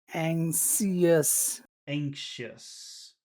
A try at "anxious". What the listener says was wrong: Just try to say it a little bit faster. Anxious. Anxious. Don't forget to whistle. You have to whistle. Shh, shh.